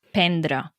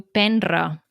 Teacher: l'última R la fa sonora, vull dir, la fa com si hi hagués doble R, no? I el mateix passa amb divendres, tendre, entendre...